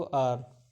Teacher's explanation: एच इसमें silent होता है, ठीक है, इसलिए ये ओ से साउंड शुरू करता है